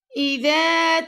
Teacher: دال کو ہم نے نرمی سے پڑھا اور دال کو ہم نے 2 سیکنڈ تک لمبا بھی کیا ہے